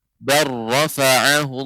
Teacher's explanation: huruf lam dilebur ke dalam huruf ra jadi huruf-hurufnya hilang